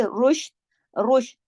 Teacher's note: रा को मोटा पढ़ेंगे लेकिन शीन को जमाओ के साथ, रुश, दाऊं दाऊं, थोड़ा सा इख्फा हो रहा है तो थोड़ी सी आवाज नाक में जा रही, थोड़ी सी बाहर, रुश दाऊं, ठीक है?